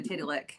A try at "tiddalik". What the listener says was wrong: Yeah, not titty, tidda. Tidda. Tidda, not titty.